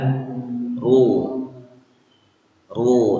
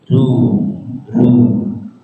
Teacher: itu tipis karena pangkal lidahnya tidak naik ke atas